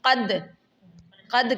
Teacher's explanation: اب یہاں پر دیکھیے گا قد، قد کیا ہے؟ دال کے اوپر جزم ہے، تو یہ دال کے اوپر قلقلہ کریں گے